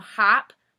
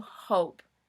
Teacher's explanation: instead of it saying ah it becomes o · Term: long vowel